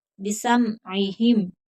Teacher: बिसमइहिम, आइन हरूफ हल्की है, सीन बारीक पड़ा जाएगा, यहाँ स्वाद का मखरिज, स्वाद की आवाज नहीं आनी चाहिए